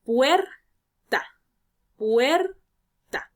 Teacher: tenemos la sílaba tónica puer y la sílaba atona ta